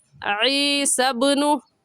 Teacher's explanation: عین حلق کے درمیانی حصے سے نکال کر پڑھا جائے گا۔ عین کی جگہ حمزہ پڑھنا درست نہیں ہے، ایسے کہیں گے عِیسَى ابْنُ۔